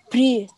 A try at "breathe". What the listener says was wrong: لا بريس. اقاوت بريس. بريس هنا معناها النفس، انما دي انا بنطقها كانها ذه. breathe، press او حرف واحد غير نطق ومعنى الكلمه.